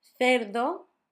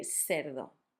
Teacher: some countries and some parts of Spain, instead of making the th sound, make an S. So you could say, instead of cerdo, you could say cerdo.